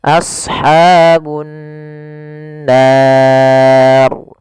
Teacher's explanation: Cara membacanya yaitu menahan suara gunnahnya, tidak langsung. Misalkan ashabun nar, harusnya ditahan dahulu.